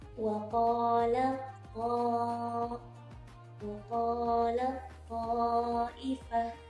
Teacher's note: Jadi huruf tak sukunya itu dimasukkan ke dalam makhraj huruf th. Berarti posisi mulut kita ketika mengucapkan huruf ta di sini tidak tersenyum tetapi sudah membulat karena mengikuti ee huruf th.